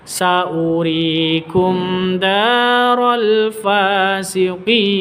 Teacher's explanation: Fa panjang dua ketukan, ada alif diawali dengan fa panjang dua ketukan, ada tanda berdiri di atasnya ya. Terus fasiqin panjangnya boleh dua ketukan, boleh empat ketukan, boleh 6 ketukan karena mad arid lisukun.